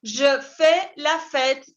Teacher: La S no se pronuncia, la AI se pronuncia como E. Je fais, con la mandíbula que cae, E accent grave.